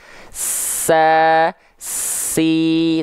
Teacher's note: suara Sin suaranya mengalir ketika dia punya sifat nafas pasti ngalir juga dengan deras sa si tuh deras alirannya su Itulah kenapa dia memiliki sifat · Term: rokhoah